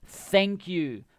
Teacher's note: You have your tongue between your teeth.